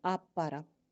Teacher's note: ठीक है, तो ये बे है और जो पे है वो आगे पीछे आने वाले हरूफ है ना, तो इसी वजह से ये पॉसिबल नहीं था कि उन दोनों को पढ़ा जाता, तो हम इसको क्या किया, पिछले हर्फ को हमने छोड़ दिया, अगले हर्फ को हमने 2 दफ़ा पढ़ लिया।